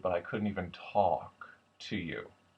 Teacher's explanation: it becomes much more of a breathy slope down